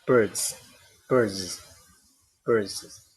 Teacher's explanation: however if we have a vo ending as in bird bird then we have a voiced plural marker